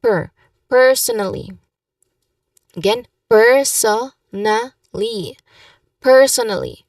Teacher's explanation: you make sure to pronounce per. That's the first syllable of the first word, because that's the emphasis here.